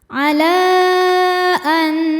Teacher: Mad thobiinya adalah fathah panjang pada kata ala, sedangkan hamzahnya a pada kata annubaddila. Maka lamnya ini dipanjangkan boleh empat, boleh lima harakat. · Maka lamnya ini dipanjangkan, boleh 4 boleh 5 harokat. Ala an. Selanjutnya ada idgham bi gunnah, karena nun sukun bertemu dengan nun yang hidup. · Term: mad jaiz munfasil